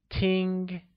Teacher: listen becomes ting and is said with a high level tone